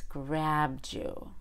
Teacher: ends in a D sound and the next word starts with a y you can blend them together to make a j